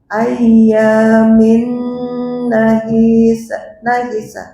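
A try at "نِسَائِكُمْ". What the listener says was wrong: Ya, i-nya enggak panjang. Ayyamin nahisat.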